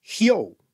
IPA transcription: hjo: